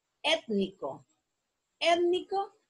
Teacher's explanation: la sílaba tónica la tiene en la antepenúltima sílaba. Entonces, y va acentuada porque es una palabra esdrújula.